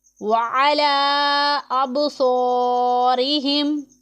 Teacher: हरूफ़े मद्दा है, यानी खड़ा ज़बर हरूफ़े मद्दा के कायम मुकाम होता है। खड़ा ज़बर एक अलिफ के जितना आपको लंबा करके पढ़ना है, ये अलिफ मद्दा के कायम मुकाम होता है।